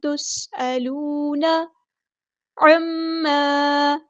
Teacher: میم پہ غنہ زمانی ہو رہا ہے، ایک الف کے برابر ہم یہاں پہ غنہ کریں گے، رکیں گے، ٹھیک ہے.